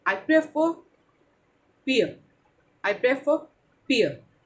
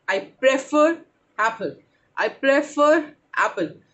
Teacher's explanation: अगर प्रेफर के बाद कोई ऐसा शब्द शुरू हो रहा है जिसकी स्टार्टिंग किसी वावल साउंड से है, तो वो इसका आर बोलेंगे